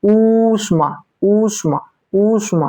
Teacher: ईश्वर बोलने में भी हम लोग को ज्यादा समय लगता है, द्विमात्रिक समय लगता है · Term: दीर्घ स्वर